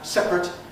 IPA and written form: ˈseprət (separate)